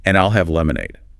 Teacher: emphasizes both I'll and lemonade in her response, and I'll have lemonade, to make her choice clear.